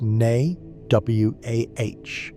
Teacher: with emphasis on the second syllable and a slight vibration on the final syllable